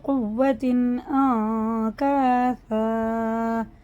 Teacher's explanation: جائیں گے، کیسے، مِن بَعْدِ قُوَّةٍ أَنْكَاثًا، یہ اظہار کا قاعدہ، نہ غنہ اخفا کچھ نہیں ہوگا کیونکہ تنوین کے بعد الف آ رہا ہے ، یہ حرف حلقی میں سے ہے۔ تتخذون ایمانکم دخلا بینکم،